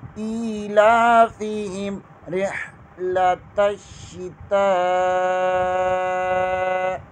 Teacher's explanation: تا کے آگے الف مدہ ہے اور الف کے اوپر مد بھی ہے، اسے کھینچ کر لمبا کر کے پڑھیں گے